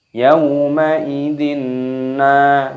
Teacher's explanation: Ini hukumnya dibaca idgham bi gunnah. Cara membacanya yaitu dengan cara dimasukkan dan didengungkan, idgham bi gunnah.